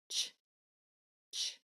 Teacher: the correct sound for a CH is air only and it's very quick it's like a Catey chop ch ch air only so the